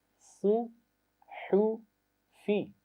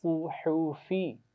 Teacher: تو اس لفظ کی پہلی آواز موٹی آواز ہے، باقی دونوں آوازیں باریک ہیں